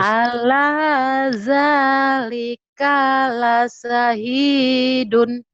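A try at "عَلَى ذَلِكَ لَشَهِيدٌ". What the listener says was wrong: iya, ala dzalika la syahidun. Shinnya ya, dilatih. Shinnya masih hutang.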